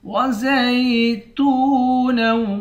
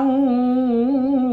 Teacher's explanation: تا کو واو کے ساتھ ملا کر ایک الف کی مقدار کھینچیں گے